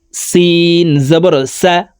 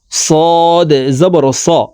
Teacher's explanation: সিন পাতলা করে উচ্চারণ করতে হবে সদ মোটা করে উচ্চারণ করতে হবে